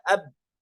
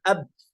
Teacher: Kemudian misalkan ketika kita membaca huruf ba, ab, terbentur antara bibir, ya, yang atas dan di bawah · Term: makhraj muhaqqaq